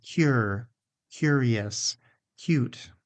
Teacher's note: We often add a little, what's sometimes called a hidden y sound. · Add that little y after the k and before the oo.